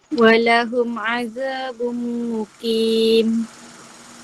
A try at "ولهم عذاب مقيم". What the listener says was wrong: Panjang sikit. Mim sabdu, nun sabdu sampai 3 harakat. Walahum azabum muqim.